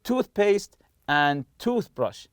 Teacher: toothpaste and toothbrush are compound nouns, and we stress the part of the tooth.